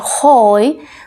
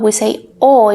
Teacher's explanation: the h has no sound at all in spanish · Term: h is silent